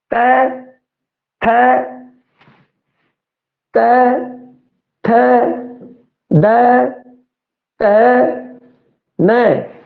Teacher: जिहड़ी जीव है वो उतले दंदां नाल टच कर रही है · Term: दंती